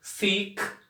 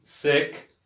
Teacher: Um i mais alongado e um mais curto, que fica entre o i e o e